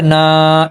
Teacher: الف خالی ہوتا ہے اور الف سے پہلے زبر ہو تو الف مدہ ہوتا ہے. زبر کو ہم 2 حرکات کے برابر کھینچتے ہیں تو الف مدہ ادا ہوتا ہے